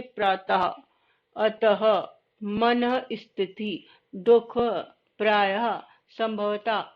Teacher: सामान्यतः विसर्ग का उच्चारण ह के समान होता है। जो विसर्ग होता है ये देखिए ये विसर्ग ये इसको हा के रूप में बोलते हैं जैसे प्रातः अतः मन स्थिति दुख प्रायः संभवतः आदि इस प्रकार के अन्य शब्द हैं।